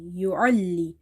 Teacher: Ain is from the middle of the throat